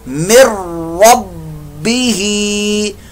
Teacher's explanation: نون ساکن کے بعد را حروف یرملون میں سے آ گیا، ادغام ہو رہا ہے، لیکن ادغام جو ہو رہا ہے وہ بغیر غننے کے ہو رہا ہے. مر ربہ، با مشدد کا قلقلہ بھی یہاں پر کریں گے.